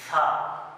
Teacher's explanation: हमारी जुबान जो है ऊपर वाले दांतों के नीचे आएगी। सा बिल्कुल आराम से, कोई जोर जबरदस्ती नहीं, बिल्कुल आराम से पढ़ना है इसको सेलेक्ट तरीके से सा।